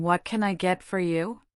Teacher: The barista's voice goes up at the end of what can I get for ya, indicating a question. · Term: intonation